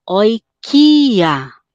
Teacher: São duas vogais em kia. Eu tenho duas vogais que estão juntas, mas são pronunciadas separadamente. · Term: hiato